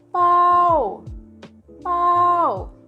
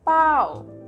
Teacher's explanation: Popla adalah konsonan sedang ditambah suara au dan ditambahkan tone marks jatuh atau maito. Jadi nadanya jatuh.